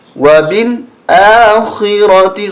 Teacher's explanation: خا کو موٹا کریں گے، را کو موٹا کریں گے